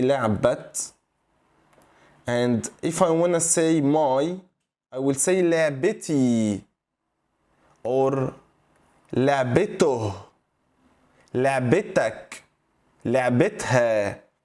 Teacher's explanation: So we say لعبة instead of saying لعبت. But when we want to add a suffix, any suffix, we have to bring back the ta sound